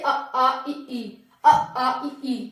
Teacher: नाक से नहीं, केवल मुंह से इनका उच्चारण होता है। जैसे अ आ इ ई, अ आ इ ई, मुंह हो रहा है, बिल्कुल नाक पे नहीं जा रहा। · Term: निरनुनासिक